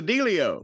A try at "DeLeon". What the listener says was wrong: DeLeon. No, DeLeon. There's an N at the end, isn't there?